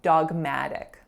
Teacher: The first one is dog with a back ah sound, just like the pet, a dog. The second syllable, our winner, is ma, and then we have an alveolar flap, and then uk, so schwa k, dogmatic.